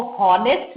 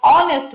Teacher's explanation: हम इसको हॉनेस्ट नहीं बोलते, ह नहीं बोलते, हम इसको ऑनेस्ट बोलते हैं, ऑ से शुरू होता है, H is silent, so it becomes a vowel sound and it will take up A and an.